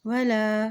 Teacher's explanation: लाम के ऊपर खड़ी ज़बर है इसलिए लाम को हम एक हरकत लंबा अदा करेंगे